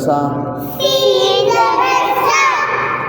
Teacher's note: سین زبر سا. سین جب بھی آئے گا تو سیٹی دینی ہے